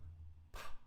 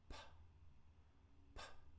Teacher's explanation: I have to release the sound. But at the beginning, I actually have to block the air from coming out of my mouth. That means that this is a partially blocked sound.